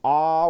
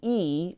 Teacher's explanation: ah, where your tongue is low in your mouth, to E, where your tongue is higher in your mouth. Where the lower your tongue is, you're going to get a lower note.